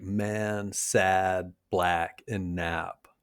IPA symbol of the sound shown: æ